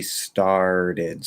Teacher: the second t there is a flap d because it's at the start of an unstressed syllable between two vowels · we have a st which weakens the t and makes it sound kind of like a d it's like weak d um the second t there is a